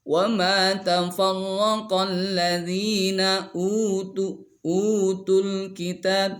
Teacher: U panjang bacaannya, menurut Imam Hafiz itu dua harkat, sama dengan mad asli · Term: mad badal